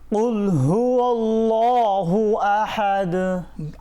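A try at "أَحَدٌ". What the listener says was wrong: আহাদ নাকে যাবে না, আহাদ। হ্যাঁ, নাকে যাবে না, কেমন?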